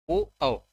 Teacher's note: ओठ से भी है ओ औ, बिना ओठ हिलाए नहीं बोल सकते, ओ औ। कंठ से भी निकलता है, गले से भी निकलता है, और ओठ से भी निकलता है, इसे कंठोष्ठ।